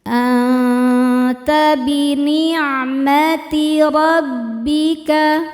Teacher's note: cara bacanya nun disamarkan ke ta disertai dengung, namun dengungnya sedikit karena ta makhrajnya masih dekat dengan nun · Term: ikhfa